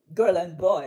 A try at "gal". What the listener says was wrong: And you're saying girl, you need to say gal. Gal and boy.